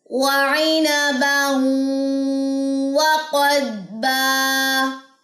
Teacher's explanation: یہاں پہ غنہ ہے، ادغام مع الغنہ. ضاد کے ساتھ قاف جب ملے گی تو سٹے ہوگا، یہاں پہ ہم نے کلکلا نہیں کرنا